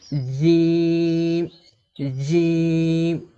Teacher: তো জিমের মাখরাজ কি? এই জিম হরফকে জিহুবার মাঝখান থেকে শক্ত করে পড়তে হয়